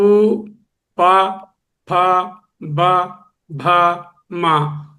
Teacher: పలికినప్పుడు ఈ పెదవులు రెండు కూడా ఒకదాన్ని ఒకటి తాకుతాయి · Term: ఓష్టములు